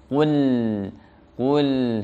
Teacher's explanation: Qaf pastikan pangkal lidahnya menempel ke bagian lunak langit-langit atas, kemudian dhammahnya sempurnakan. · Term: huruf qaf